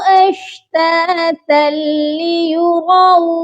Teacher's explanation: اشتاتل یہاں پر صرف ادغام کرنا ہے، غنہ نہیں کرنا